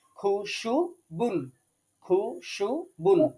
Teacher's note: শিনটা আপনার জিহ্বার মাঝখানে যাচ্ছে কিনা এটা একটু আপনাকে খেয়াল করতে হবে